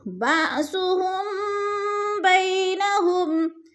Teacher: میم ساکن کے بعد حرف با آگے ہے تو ادھر اخفاء شفوی ہو رہا ہے، ناک میں آواز کو چھپا کر پڑھیں گے یعنی غنہ کریں گے۔ بأسہم، با حمزہ ساکن ہے، جھٹکا دے کر پڑھیں گے۔